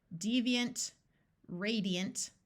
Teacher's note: ANT at the end of a longer word, usually schwas and sounds more like unt or int